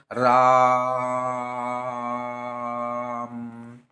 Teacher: राम मतलब बहुत देर तक राम बोल रहे हैं तो उसको क्या कहेंगे हम लोग त्रय मात्रिक या प्लुत स्वर कहेंगे